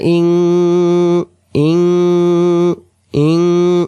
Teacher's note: এরপরের আয়াত ওয়া লা হামজা নুনজের ইং, ইং হবে অনুষ্কারের মতো, নুন সাকিনের বাম পাশে কব অক্ষর থাকার কারণে কব ইকফার নিয়ম হবে এখানে, নুন সাকিনটা নাকের ভিতরে গুনগুন